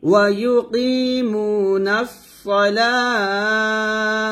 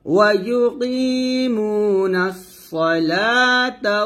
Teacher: এখানে ওয়াকফ ধরলে তাটাকে আমরা হা উচ্চারণ করব লাতে 3 আলিফ টান দিয়ে তাটাকে হা উচ্চারণ করব ওয়া ইউকিমুনাস